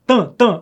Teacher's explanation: o AM aqui tem um som só, tam, tam, nasal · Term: dígrafo vocálico